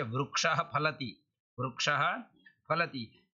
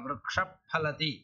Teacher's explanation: यह विसर्ग से पर में फ है तो जो है विसर्ग का उपदमानीय हो जाएगा